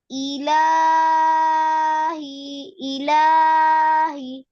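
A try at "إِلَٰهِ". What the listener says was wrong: হ্যাঁ, লাতে টান না দিয়ে অল্প করে দাও। ইলাহি, ইলাহি, এক আলিফ।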